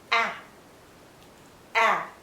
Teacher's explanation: it's also a short sound and a tense sound